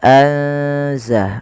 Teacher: Maka cara membacanya yaitu memasukkan nunnya atau menyamarkan nunnya kepada huruf zai. Ya, anza langsung kepada makhraj daripada huruf zai.